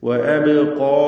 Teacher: അബ്ഖാ അബ് എന്നതിലെ ബാഇന്റെ സുക്കൂൻ ഖൽഖല സൂറ നൽകി ശബ്ദം ഹറക്കത്ത് പോലെ വ്യക്തമാക്കി ഉച്ചരിക്കണം. അബ്ഖാ എന്നതിലെ ഖാഫിന് തഫ്ഖീമാണ്.